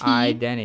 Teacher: it's very common in American English to drop the T identity after the N.